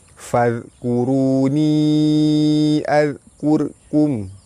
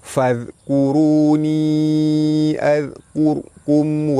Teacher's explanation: Sepatutnya kena tebal sebab ra mati sebelum dia ada huruf yang berbaris depan. Jadi ra tu perlu ditebalkan.